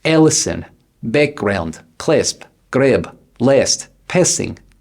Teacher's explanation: Nasalize the short A.